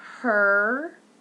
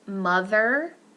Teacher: we have her, which is more tense than mother